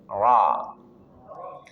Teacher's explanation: Ra ujung lidah bertemu dengan gusi dua gigi seri atas.